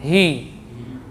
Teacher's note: hi jelas, ya, dari pangkal tenggorokan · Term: ha